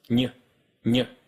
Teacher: the middle of your tongue doesn't just move towards the roof of your mouth, it actually touches it, stopping the airflow and forcing the air to come out of your nose